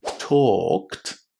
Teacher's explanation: Pay attention that in talked the L is silent and there is a long O inside